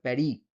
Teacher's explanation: ফরাসি ভাষায় কিন্তু প্যারিস উচ্চারণ করা হয় না। ওটাকে বলে প্যারি।